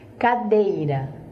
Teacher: Cadeira, o rá sai pequenininho.